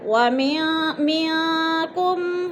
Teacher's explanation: نون ساکن کے بعد کاف حروف اخفا میں سے ہے تو ادھر اخفا کریں گے، آواز کو ناک میں چھپا کر پڑھیں گے